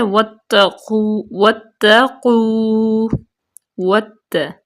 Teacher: تا کو سختی سے اس لیے پڑھیں گے کیونکہ تا مشدد ہے مشدد حرف جو ہوتا ہے وہ دو ہوتے ہیں یعنی کہ